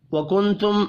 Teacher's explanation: نون ساکن کے بعد تا ہے، اخفاء حقیقی ہوگا، آگے میم ساکن کے بعد حمزہ ہے، اظہار شفی ہوگا، غنہ نہیں ہوگا۔